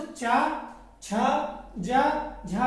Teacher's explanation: हमारे कंठ से थोड़ा सा आगे जब बढ़ेंगे तो पिछली हमारे मुख की पिछली जो छत होती है उसको बोलते हैं तालव्य।